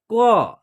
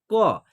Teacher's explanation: जब हम क का उच्चारण कर रहे हैं तो उसमें अ की साउंड आ रही है, यानी कि दो अक्षर के मेल से पूरा क का उच्चारण होता है।